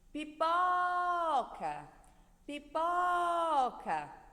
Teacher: Perceberam que o pó é a sílaba mais forte, a sílaba tônica da palavra pipoca?